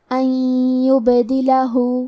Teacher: کلمت ان کے آخری میں نون ساکن ہے، پھر حرف الیا ہے کلمت یبدلہ، یا حروف الادغام بغنہ میں سے ہے، ادغام کا معنی ہے حرف کو حرف میں داخل کرنا، تو ہم نون ساکن کو یا میں ملا کے غنہ اور تشدید کے ساتھ یہ حکم کو ادا کریں گے۔ ان یبدلہ، کلمت یبدلہ میں با پہ جزم ہے اور با بھی حروف القلقلہ میں سے ہے، لہذا ہمیں حرف البا کو قلقلہ سے پڑھنا ہے۔